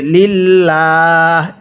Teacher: দেখুন আল্লাহ শব্দের যে লামটি আছে এই লামের পূর্বে যদি জের থাকে কি বললাম? আল্লাহ শব্দের লামের পূর্বে যদি জের থাকে তাহলে লামটাকে চিকন করে পড়তে হবে। লিল্লাহ এরকম ভাবে পড়তে হবে।